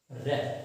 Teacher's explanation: लुंठित जिसमें जिह्वा बार बार ऊपर नीचे हो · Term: लुंठित ध्वनि